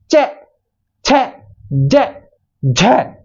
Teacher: स्पर्श कैसे क्योंकि जो इनका जब हम उच्चारण करते हैं तो हमारी जो जीवा है वो तालू को स्पर्श करती है · इनके उच्चारण करते समय जो हवा है ना वो घर्षण के साथ बाहर निकल रही है इसलिए तो ये हो गए संघर्षी व्यंजन और स्पर्श स्पर्श कैसे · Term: स्पर्श संघर्षी व्यंजन